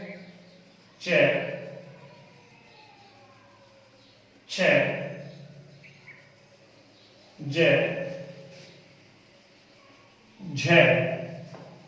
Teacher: इन व्यंजनों को उच्चारित करते समय स्पर्श तो होता ही होता है जिह्वा का, लेकिन संघर्ष के साथ स्पर्श होता है। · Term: संघर्ष स्पर्शी